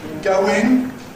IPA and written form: ˈgəʊɪŋ (going)